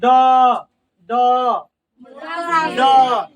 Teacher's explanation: देखना जीव जो है ना दांत से ऊपर वाले मसूड़ा में सट रहा है